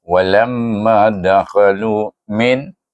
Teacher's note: perhatikan saya baca satu harakat sahaja kerana dia baca dengan izhar